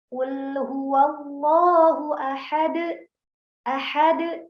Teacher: Ketika kita membaca pantulan ya, pantulan huruf qalqalah ini langsung terhenti. Jadi seakan-akan ada hamzah sukun setelahnya.